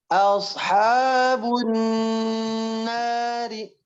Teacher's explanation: Dari ashabun nar, nunnya tahan lebih lama.